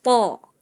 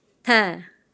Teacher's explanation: Kalau to mah sifatnya dia isti'la, pangkal kita naik. Po. Kalau tak mah tidak naik.